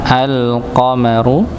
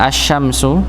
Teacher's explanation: Yang pertama adalah ee alqamaru hamzahnya di sini masuknya kepada al ee lam sukun wal qamaru. Sedangkan pada alif lam syamsiyah langsung masuk pada sin yang bertasydid asyamsu. Ya, jadi lamnya ini sudah tidak terbaca.